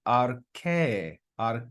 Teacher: bit of practice so that word is read ar ar and you can hear how I go up and down on that last vowel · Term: circumflex